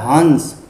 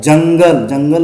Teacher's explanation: अनुस्वार का उच्चारण न म के समान होता है, न और म के समान होता है।